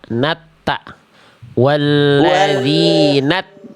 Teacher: langsung makhraj ke huruf ta. Jangan nanta.